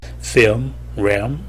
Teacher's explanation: 혀끝이 닿지 못하고 후설이 올라오게 되면 영어의 우 소리 비슷한 소리가 납니다. 우리말의 우와 으 소리 중간 소리가 납니다